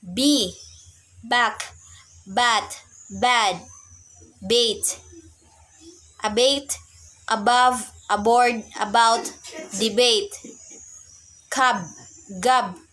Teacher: Voice bilabial stop.